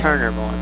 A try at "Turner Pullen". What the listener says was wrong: Actually, it's not Mullen, it's Pullen.